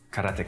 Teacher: there's no stress on any syllable